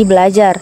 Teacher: ada perubahan menjadi berajar tetapi karena ada dua bunyi R maka R yang pertama diperbedakan atau didesimilasikan menjadi l sehingga menjadi belajar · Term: disimilasi fonemis